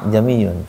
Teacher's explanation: Hanya saja hamzah yang kedua tuh dibaca samar. Jamiyun. Kayak diseret lah, kayak digeret itu. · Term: tashil